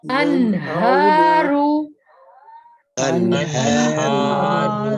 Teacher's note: اس میں نون ساکن کے بعد ہا سینے والا ہے